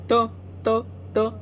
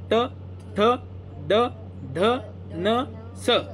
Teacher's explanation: म्हणून जीभ जे वर्ण उच्चार करत असताना जिभेचा किंवा जीभ दातांच्या मागच्या बाजूला लागली ना त्यांना दंत्यवर्ण म्हणायचं